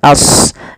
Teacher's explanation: Kemudian pada lafal ashabu, sodnya tebalkan as, jangan ashabu, jangan sin, tapi dia huruf sod sesuai dengan makhraj dan sifatnya.